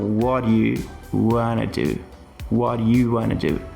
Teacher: Eu tô linkando tudo e criando meio que um único bloco aqui de sons de what do you want to do para what you wan to do. Percebe que o primeiro do que eu digo what do you want to do? Ele quase que não existe mais. Ele é quase que tirado aqui da frase.